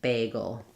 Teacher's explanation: But you're not really doing a long not goal, but just going very quickly from the g to the goal, and then a long stressed a